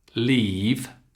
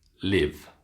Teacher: keep the e lovely and long e and keep the i super short